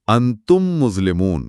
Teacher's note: آپ میم کی آواز پر زور دے کر اسے لمبا کر رہے ہیں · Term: غنہ